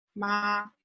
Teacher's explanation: First tone is high and flat, like ma, when the dentist asks you to open your mouth.